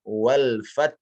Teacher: Contohnya di sini bacaan sudah baik, namun kalau boleh ya lebih ditipiskan lagi wal fat.